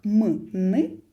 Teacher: відповідає м'яке піднебіння воно як стрілочний перевід на рельсах направляє повітря якщо ми кажемо такі звуки як м н повітря направляється м'яким піднебінням у ніс